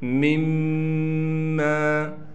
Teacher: میم کو ہم ڈائریکٹ اس میم کے ساتھ غنہ کے ساتھ پڑھیں گے